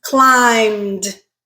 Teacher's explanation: that letter B is silent okay so in terms of sounds it ends with the m sound which is still a voiced consonant